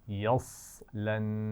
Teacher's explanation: یصلن ملائیں گے جب ہم، صاد کی اپنی آواز تو نہیں ہوگی، اس پر جزم ہے، لیکن جب ہم ملائیں گے تو صاد کو واضح کرنا ہے، اس کی موٹائی جو ہے واضح کرنی ہے. یصلن نون پر غنہ ہے.